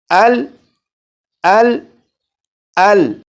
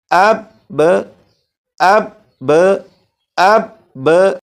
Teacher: اب میں یہاں سے لام کو اس طرح سے پڑھوں گا کہ لام کی جب ادائیگی کر چکوں گا تو آواز کو ختم کر دوں گا، اس کا مطلب ہوگا کہ میں نے لام پر کلکلا نہیں کیا، جیسے ال ال ال۔ اب با کی ادائیگی اس طرح سے کروں گا کہ با پر آواز ختم نہیں ہوگی بلکہ اس کے بعد آپ کو ایک آواز آئے گی، وہ آواز لوٹ رہی ہوگی